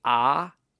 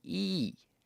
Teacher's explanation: of the tongue in the mouth say ah and then II your tongue is low for ah a large volume and high for II a small volume as you raise your tongue toward the roof of your mouth